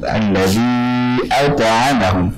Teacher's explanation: ta-nya sifatnya syiddah dan juga jahr, dia punya sifat yang kuat dan juga jelas